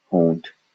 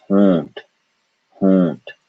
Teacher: There is a vibration in the nose when we say O for the duration of O. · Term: nasal vowel